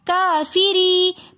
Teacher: رو کے نیچے زیر ہے تو اس لیے ہم اس رو کو باریک پڑھیں گے